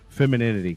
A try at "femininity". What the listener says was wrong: There's no D in it